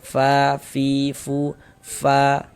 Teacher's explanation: ketika kita mengucapkan huruf fa, itu ada nafas yang mengalir ya ketika kita mengucapkannya. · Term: sifat hamas